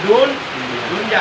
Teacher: Jadi nun matinya jangan diidgomkan ke dalam huruf iya yang ada di depan. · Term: izhar mutlak